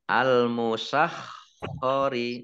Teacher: kemudian khoknya dibaca double, ada tasdidnya, ya. Al-musakhkhari, ya, khok ya, di tenggorokan, khok.